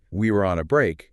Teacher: With heavy stress on we and on. And you're even trying to capture that underlying emotional tone, the exasperation, the defensiveness.